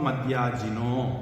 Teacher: மத்து யாஜினக, இத்துங்கிறது அடுத்தது வல்லினம் வராததுனால இத்து அப்படின்னு மாறி, அந்த இத்து யாவும் சேர்த்து எழுத முடிஞ்சதுனால மட்டும் இல்லை, இந்த இடத்துல காம்பவுண்ட், அதனாலையும் மத்யாஜினக அப்படின்னு வந்துடும். அந்த யாஜினக அக விசர்க்கம் என்னாகும்? ஓன்னு மாறும்.